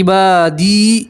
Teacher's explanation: یا مدہ میں ایک الف کے برابر کھینچتے ہیں, ٹھیک ہے. یا مدہ کسی کے یا کے اوپر جزم اور اس سے پہلے والے حرف کے نیچے زیر, تو اسے یا مدہ کہیں گے.